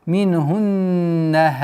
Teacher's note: С огласовки дамма уходим на удвоенный нун и удержанием в размере двух огласовок назализации.